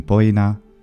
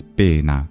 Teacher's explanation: the oi diphthong. This regularly closes into e in words in Italian, like Latin poena goes to pena in some time in the classical period, and then is pena in modern Italian.